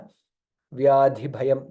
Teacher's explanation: ಜನ್ಮ ಮೃತ್ಯು ಜರ ವ್ಯಾಧಿ ಭಯಂ this is one single word ವ್ಯಾಧಿ ಧ ಮಹಾಪ್ರಾಣ ಅಂಡ್ ಭಸ್ ಆಲ್ಸೋ ಮಹಾಪ್ರಾಣ · This is one single word. Vyadhi Dha Mahaprana and Bha is also Mahaprana